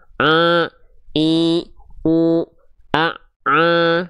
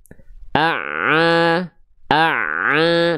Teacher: suara masuk ke dalam rongga hidung sehingga terdengar nyirung atau sengau atau bindeng.